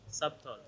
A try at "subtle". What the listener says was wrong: Oh, on y est presque. Alors ici, le piège avec ce mot-là, c'est que le B est muet. Voilà, il y a plusieurs règles concernant ça. Généralement, vous avez une voyelle suivie de 2 consonnes.